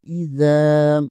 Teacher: حمزہ زیر ای، زال الف زبر زا، اذا، زال زبر کے آگے الف مدہ ہے، اسے 1 الف کے برابر کھینچنا ہے